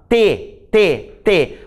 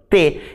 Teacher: a minha língua tocou na arcada dentária superior